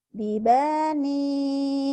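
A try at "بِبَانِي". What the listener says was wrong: pendek. Bibani. Ujungnya doang yang panjang. Bibani. Coba hentikan. Kalau dihentikan sama. Kan ujungnya mana sih? Banyak kenapa panjang? Bibani. Bibani.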